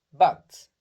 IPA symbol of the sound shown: ʌ